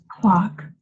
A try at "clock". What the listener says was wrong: You never have to say clock. Clock is not the proper vowel. It's clock. Look at me. Clock. Clock. Clock.